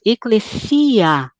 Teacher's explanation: som longo ele não é uma semivogal então nós dizemos eclecia as duas vogais são pronunciadas inteiras como duas e não como uma só